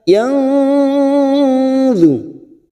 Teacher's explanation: kita samarkan bunyi nun sukun 3 harokat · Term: ikhfa hakiki